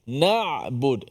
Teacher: Dari sudut suaranya. Suara daripada suara tertahan dengan suara terlepas dia duduk tengah-tengah. Sebab tu ain dia ada sikit suara lepas tu. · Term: sifat tawassut